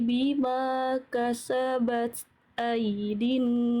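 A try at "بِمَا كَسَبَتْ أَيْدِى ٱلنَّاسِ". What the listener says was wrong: Hati-hati ta sukun. Jangan sampai ada bunyi es.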